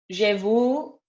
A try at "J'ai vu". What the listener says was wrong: You'll eventually get the U. It's not vous. J'ai vu. Vu. You got to work on the U sound. You go oh and try and say E. You go oh U.